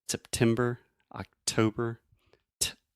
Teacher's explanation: I'm really aspirating, which means I'm breathing air out of my mouth and going t, making that pop sound. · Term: true T